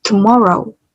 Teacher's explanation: Kalian bisa dengar bahwa huruf vokal O yang ada di kata tomorrow aku panjangkan dan aku lebih ucapkan dengan jelas